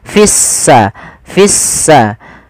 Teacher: kita baca sehingga di sini lamnya ditandai dengan warna abu-abu artinya lamnya dianggap tidak ada sehingga langsung diidgamkan ke huruf Sin sehingga sinnya berharakat tasdid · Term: alif lam syamsiyah